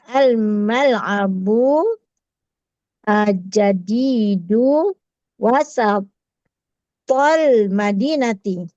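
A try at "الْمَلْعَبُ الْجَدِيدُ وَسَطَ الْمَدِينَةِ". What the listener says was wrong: Bagus. Wasatah di tengah.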